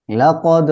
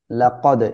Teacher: এখানে কলকলা হবে, দাল কলকলার অক্ষর সুকুন অবস্থায় আসছে এজন্য। হাক্কল, কও নরম করে পড়বেন।